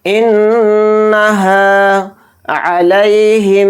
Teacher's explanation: نون کے اوپر تشدید ہے، نون میں غنہ کریں گے